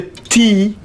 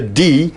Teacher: d do i not vibrate them then i say a t so this is a difference in voicing as we call it in linguistics